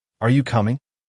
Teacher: when asking a yes slash no question the pitch usually Rises at the end